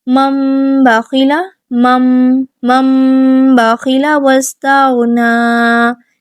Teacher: ہم نون ساکن کو میم سے بدل کر غنہ کرتے ہوئے پڑھیں گے · منہ بند کر کے ہم غنہ کرتے ہیں اور اس کے بعد با کے لیے ہم اپنا منہ کھولیں گے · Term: اقلاب